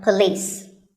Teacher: women word number six is police this isn't police or police it's pa and lease with the stress on lease · It's pa and lis with the stress on lis.